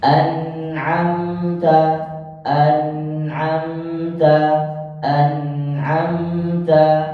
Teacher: izhar di di sini pertama izhar halq kedua izhar syafawi anamta nun sukun bertemu dengan Ain maka dibacanya secara jelas